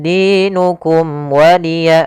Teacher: Kemudian dinukum waliya ada mim mati bertemu dengan huruf wau. Maka suara mimnya harus dibaca dengan ee jelas tidak boleh ditahan karena dia bertemu dengan huruf wau.